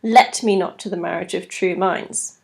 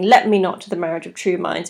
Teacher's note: the iambic Rhythm there is reversed and that's known as trochaic substitution so it places emphasis on that opening line and there are